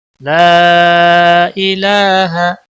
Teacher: ای کو لمبا نہیں کرنا ہے، ہا کو بھی لمبا نہیں کرنا ہے